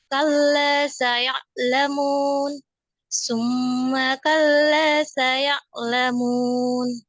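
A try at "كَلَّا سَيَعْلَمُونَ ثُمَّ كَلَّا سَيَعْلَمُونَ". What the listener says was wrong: Masya Allah, kurang dibuka lagi ya mulutnya ya. Kalla saya'lamun, summa kalla saya'lamun.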